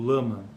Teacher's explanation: apresenta em português as realizações l alveolar quando antecede uma vogal